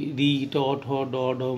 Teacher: দাঁতের গোড়ালিতে, যে আমরা যেটাকে সাধারণ বাংলায় মাড়ি বলি, দাঁতের গোড়ালিতে দেখবে দাঁতের গোড়ার ওখানে একটু উঁচু অংশ আছে, তুমি তোমার জিহ্বার ডগা দিয়ে যদি দাঁতের গোড়ার অংশটাকে স্পর্শ করো, তাহলে কিন্তু তুমি এই মূর্ধাটি পেয়ে যাবে। তো ওখান থেকে যে উচ্চারিত হয় সেগুলোকে বলা হবে মূর্ধন্য ধ্বনি মূর্ধন্য বর্ণ।